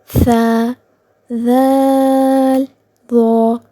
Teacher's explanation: यह हुरूफ दांतों के सिरों से अदा होते हैं। इन हरूफ का मखरज जुबान की नोक और ऊपर वाले दांतों का सिरा है। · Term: हरूफ लीविया